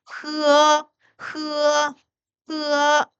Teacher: 얘는 흐로 시작해서 으로 끝나면 됩니다